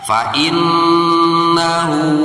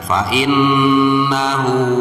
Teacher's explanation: Nah, di sini kita menemukan nun yang berharokatkan tasydid atau syiddah. Itu cara membacanya harus dibaca gunnah atau didengungkan.